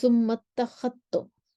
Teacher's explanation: जाल का ता में इदगाम हो जाएगा